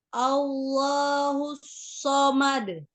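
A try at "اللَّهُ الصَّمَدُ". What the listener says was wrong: Jangan ketika shotnya itu tidak dimonyongkan ya. Pas dimonyongkan itu yang domahu saja. ke makhraj shotnya ya. Jadi jangan hus, tapi hus. Oh, nanti baru dibuka ketika dia fathah ya hus. Oh, jadi kembalikan dulu ke makhraj asalnya ketika dia sukun ya. Shot sendiri kan ujung lidahnya itu antara gigi seri atas dan bawah hampir menyentuh bawah ya. Hus, hus. Jadi bukan hus, hus.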